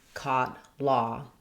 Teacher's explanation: It's almost as open as the ah vowel, but it has some lip rounding. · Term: mid-back rounded vowel